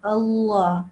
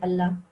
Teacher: if it's preceded by a kasra, then we just say it normally, not in a thick way. We just say Allah.